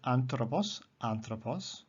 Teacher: the accent is on the third last syllable the antepenult